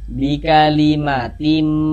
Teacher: Jangan dibaca bikalimatin. Tin jangan tapi tim. Pakai m tim. Nah, karena di sini huruf mim jadi dia melebur ke huruf mim. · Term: idgham bighunah